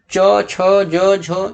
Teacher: जब हम च छ ज झ ये का उच्चारण करते हैं तो हमारा जीभ जो है तालु को स्पर्श करेगा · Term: तालव्य